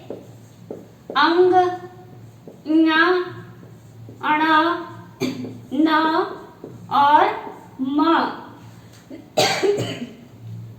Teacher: जिन वर्णों का उच्चारण करते समय वायु जो है वो हमारे नाक से निकलती है। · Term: नासिकीय ध्वनि